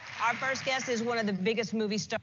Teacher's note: Our first guest, the T is almost elided, right? Our first guest, we don't hear guest, right?